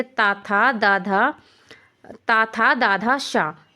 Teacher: ठीक है, हमारे ऊपर वाले दांत होते हैं, हमारी जीभ जो होती है उसकी नोक ऊपर वाले दांतों को स्पर्श करती है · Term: दंत्य व्यंजन